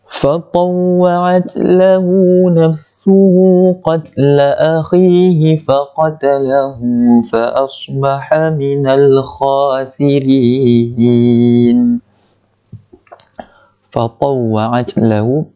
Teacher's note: bagi ada bunyi angin ta itu, angin yang halus lah